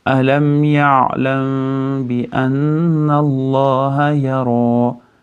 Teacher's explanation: Endi bu yerda ixfo bo'ladi. Mim b ga yo'liqqanda ixfo shafaviy bo'ladi. Ya'ni lablarga yashiramiz.